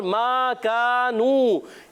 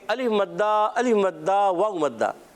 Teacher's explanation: मा कानू तीनों को एक एक अलिफ खींचना है